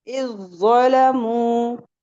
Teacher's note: जाल नर्म लेटर है, मुस्तफिला है, और ज़ो मुस्तआलिया है, लेकिन एक दूसरे में इदगाम हो जाएगा। ये जाल कहाँ चला जाएगा, ज़ो में मुदगम हो जाएगा, उसमें इसका इदगाम हो जाएगा।